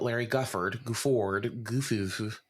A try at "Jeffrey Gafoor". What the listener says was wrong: Jeffrey Gafoor. You said Larry Gufford, and it's Jeffrey Gafoor, so it was very close.